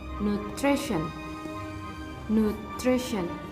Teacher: the stress is located on the second syllable